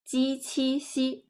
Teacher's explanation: This group of Sheng initial are known as coronals. So the surface of the tongue touches the hard palate when pronouncing 鸡 and 七.